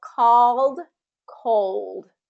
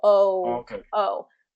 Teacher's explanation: I'm going to drop my jaw, and get a wider vowel sound there.